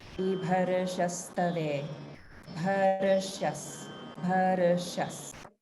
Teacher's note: there's a slight roll of the r before the sha, and that's due to the swarabhakti of ra or repa combined with another sound in the same syllable.